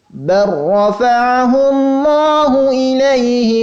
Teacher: Ya, maka huruf yang pertama dimasukkan ke dalam huruf yang kedua, dibaca tanpa disertai dengan gunnah. Ya, hanya diberikan tekanan, seakan-akan kita membaca dua huruf yang double, yang ganda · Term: idgham mutaqaribain